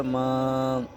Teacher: حرف مدہ کو ایک الف کے برابر کھینچ کر پڑھیں گے